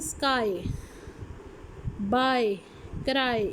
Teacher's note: इसमें आए वाउल आ गया, ठीक है, आ वाउल और उसके साथ ई, तो टूवर्ड्स ई है ये।